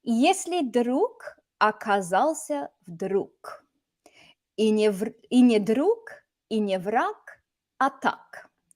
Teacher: if you have a g at the end of a word, it gets devoiced, meaning it turns into a k. K is the whispered version of g.